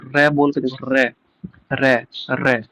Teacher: 2-3 बार हो रहा है ना, जीभ हमारी वाइब्रेट करती है मुख पर, मुख के द्वार पर · इसमें मुख द्वार जीभ की नोक से शीघ्र ही बंद होता है, 2-3 बार खुलता रहता है। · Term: लुंठित